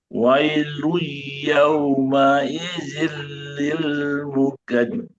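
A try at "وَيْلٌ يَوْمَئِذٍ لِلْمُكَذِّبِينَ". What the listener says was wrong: Ada satu guna terlewat.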